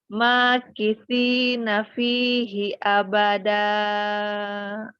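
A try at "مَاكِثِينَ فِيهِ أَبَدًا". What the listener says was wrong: Matobi'nya jangan terlalu panjang, mat ngiwatnya. Makithina fihi abada.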